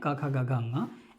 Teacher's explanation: क वर्ग का जो स्थान है क ख ग ङ इसका जो उच्चारण स्थान है वो क्या है जिव्हा मूल है